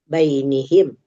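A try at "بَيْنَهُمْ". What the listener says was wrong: Jangan baini, baina. Kalau nggak ada yang mengganggu baina ini tetap baina.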